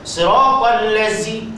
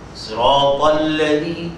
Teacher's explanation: Zal dia langsung tak ada bunyi geseran tidak ada pada Zal bunyi safir tidak ada pada Zal · hujung lidah hujung gigi seri sebelah mana sebelah dalam